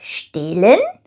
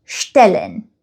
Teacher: But in German, the sound does not change that drastically, but you just kind of linger on it a little bit longer and spend a little more time saying the vowel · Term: long vowel combinations